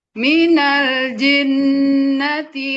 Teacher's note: Jangan ada jarak antara jim sama nunnya. Langsung guna. Minal jinnati w langsung coba.